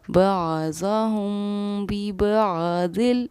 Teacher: ہم کی آواز کو ہم نے ناک میں لیا · جب میم ساکن کے بعد با ہے تو یہ ہمارا دوسرے نمبر کا قاعدہ ہوگا، اور یہاں پر ہمارے اخفاء بھی ہوگا اور غنہ بھی ہوگا۔ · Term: اخفاء شفوی